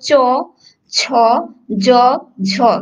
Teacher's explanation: এই 4টা বর্ণ কিন্তু একটা বিশেষ স্থান থেকে উচ্চারিত হচ্ছে, যেটা হচ্ছে তোমার জিহ্বার তালু থেকে এই 4টা বর্ণ উচ্চারিত হচ্ছে। তোমরা যদি উচ্চারণ করো চ ছ জ ঝ, 4টা বর্ণই ঠিক একই জায়গা থেকে উচ্চারিত হচ্ছে, অর্থাৎ একটা বিশেষ স্থান থেকে উচ্চারিত হচ্ছে।